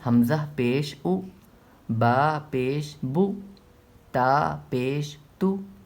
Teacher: پیش کی آواز آگے کو جاتی ہے اور ہونٹ گول ہوتے ہیں